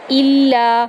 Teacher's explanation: حمزہ کو لام کے اندر داخل کریں گے اور سختی کے ساتھ. اگر شد اوپر نہیں ہوتا پھر الا بنتا, ٹھیک ہے.